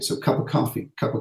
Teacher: You have the A in of being reduced to a schwa, but you also have the linking between the P in cup and the vowel, so cup, P, and you have the V in of disappearing too.